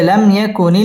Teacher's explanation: লাম মিম সাকিন ইজহারে খাস গুন্না ছাড়া পড়তে হবে